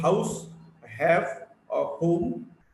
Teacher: H is a voiceless glottal fricative.